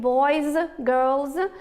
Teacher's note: we have the ending z in boys, girls, after the voiced consonants and vowels. We have the ending s after devoiced consonants like students, books, and the like.